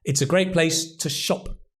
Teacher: The to becomes t because we're stressing the noun.